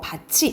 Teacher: 그래서 발음은 우리가 쓸 때는 디귿티읕으로 쓰지만 발음은 지읒치읒으로 난다 이 말이야